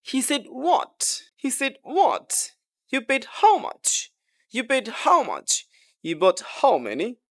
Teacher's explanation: assertive সেন্টেন্সের শেষে শুধু ডাব্লিউএস ওয়ার্ডটা জুড়ে দেওয়া হয় তাহলে এটা সারপ্রাইজ বা ইমফেটিক কোশ্চেন্স হয়ে যায় এবং টোনটা রাইজিং টোন হয়